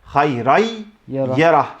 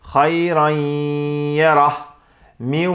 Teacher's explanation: genizden de sesin çıkarılmasına dikkat edilmesi gerekiyor